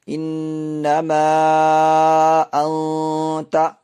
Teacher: مد منفصل ہوگی۔ تو اس کو ہم کھینچ کے تھوڑا پڑھیں گے